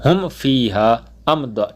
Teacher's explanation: اظہار شفوی یعنی غنہ نہیں کریں گے